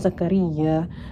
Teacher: mad tabi'i karena ada alif di fathah, panjangnya adalah 1 atau 2 harokat